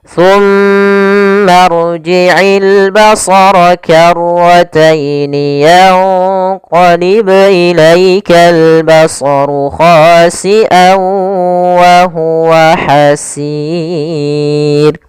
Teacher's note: Pada lafal hasir ada bacaan mad sukun sebagaimana kata futur. Boleh memanjangkan dua harakat, boleh empat dan boleh pula enam harakat.